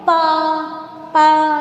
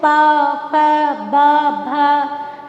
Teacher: दोनों जो मेरे ऊपर नीचे के होठ हैं वो टच हो रहे हैं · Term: ओष्ठ